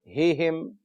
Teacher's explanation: ہا جو ہے حروف حلقی میں سے ہے مگر سینے کے قریب سے گویا کہ ادا ہوتا ہے. حلق کا وہ حصہ جو سینے کے قریب ہے.